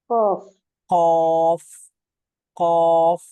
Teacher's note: জিহ্বার গোড়ালি থেকে আমরা কফ উচ্চারণ করেছি